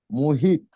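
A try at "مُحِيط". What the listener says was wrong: মুহিত টান দিতে হবে।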